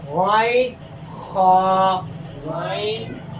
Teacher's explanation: جو حلق کے سب سے نچلا حصہ ہے اس سے حمزہ ہا ادا ہوتا ہے، اور حلق کے درمیانی حصے سے عین اور ہا ادا ہوتا ہے، اور حلق کے سب سے اوپر والے حصے سے غین اور خا ہوتا ہے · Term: اقصی حلق